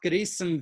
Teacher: Oftentimes when you're speaking Yiddish, the final nun is pronounced as if it were a final mem.